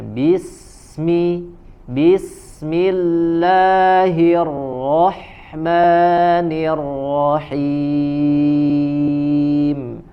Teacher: huruf Sin memiliki sifat rohuwah mengalir suaranya maka tidak boleh ada jeda